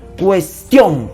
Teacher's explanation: El acento está en la sílaba tion.